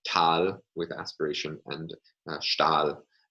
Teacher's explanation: we can contrast Tal with aspiration and Stahl without an aspirated alveolar stop.